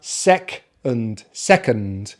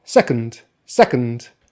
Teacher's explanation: Second syllable is the reduced syllable, so we use the schwa, and sometimes actually you can say it even without the schwa and just the nd at the end